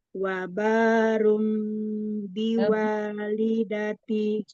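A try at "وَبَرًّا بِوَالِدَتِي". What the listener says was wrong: Roknya tasdid. Roknya fathah. Wabarrom biwalidati walam yaj'alni bukan taj'alni. Bukan wabarrum, bukan dhammah, bukan ru, tapi ra fathah. Wabarrom.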